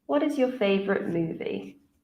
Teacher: So for WH questions, we use a falling intonation.